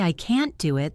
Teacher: But if I say I can't do it, the word can't is stressed and has a clear vowel sound.